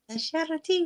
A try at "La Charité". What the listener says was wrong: It's even the stress on the name.